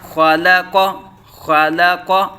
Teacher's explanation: اب یہ دیکھیے خا پر پڑھا گیا، لام باریک حرف ہے تو لام کو باریک پڑھا گیا، قاف پھر حروف مستعلیہ میں سے ہے تو خا کو پر، اس طرح خا اور قاف کو پر جبکہ لام باریک پڑھا جائے گا